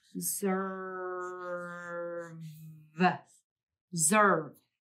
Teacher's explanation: The S is making more of a Z sound in this syllable, which the S can do, especially when it's in the middle of a word.